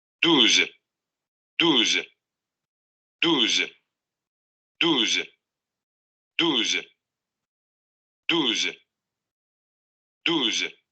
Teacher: Posterior cerrada labializada, exactamente.